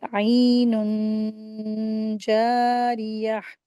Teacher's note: नून की आवाज़ को नाक में छिपाकर गुन्ना करके रीडिंग करेंगे। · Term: इख्फा